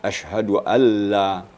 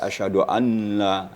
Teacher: nunnya hilang ya hilang dalam bacaan